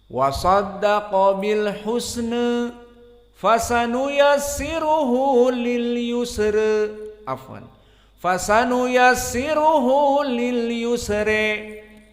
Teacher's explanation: Maka qiraah Abu Amr dibaca taklil dan dibaca di akhir ayat menjadi al-imalah al-kubra.